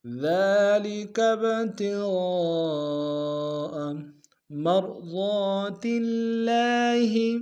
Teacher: را کے سامنے لیں گے، را کو موٹا ادا کریں گے، ضاد کو موٹا ادا کریں گے ، ضاد کے الف مدہ ایک اندام میں کھینچیں گے، تاکہ